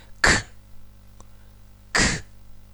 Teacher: ส่วนหลังของลิ้นชนกับเพดานอ่อน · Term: เสียงเพดานอ่อน